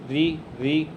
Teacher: जो जीभ हमारी टकरा रही है वो मूर्धन्य से टकरा रही है दोस्त, तो ये इसका उच्चारण स्थान होता है हमारा मूर्धन्य।